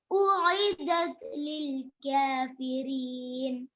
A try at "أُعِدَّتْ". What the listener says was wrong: أعدت. That has shadda. أعدت.